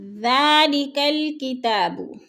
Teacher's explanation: کتاب کے اوپر کھڑی زبر ہے، تھوڑا سا لمبا کر کے پڑھنا ہے۔